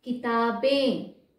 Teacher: अनुनासिक आ रहा है, नाक में आवाज आ रहा है।